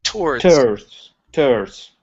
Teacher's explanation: Now here you used a Spanish T saying towards. Okay, give me a t sound.